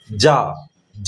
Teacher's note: जा तो तालुव्य है, तलवे का सहारा लिया जाता है। ऊपर का जो तालुव्य है ना, ऊपर का, आप जीभ के ऊपर का भाग जो है, आप देखिए ना, ऊपर वाला तालुव्य, तो वह जा जो है वो तालुव्य शब्द है।